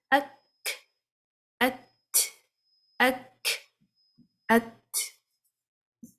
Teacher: For the letter kaf and the ta, it has the quality of the hums, it has the quality of shidda as well. So hums is applied towards the ending of the sound.